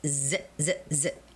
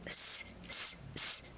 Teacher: normally when it is a voiced sound, it is the voiced z z z. And when it is a voiceless sound, it is the s s s.